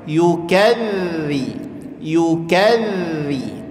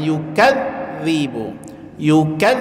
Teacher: danya tasdid tapi sifatnya rakah dari segi suara dia mengalir saja jadi tekan sedikit zanya tapi tetap suaranya mengalir